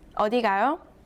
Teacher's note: read the last syllable with a rising tone, the whole sentence means where you going?